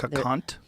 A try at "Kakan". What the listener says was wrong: Kakan, not cunt. K-H-A-K-H-A-N. Kakan.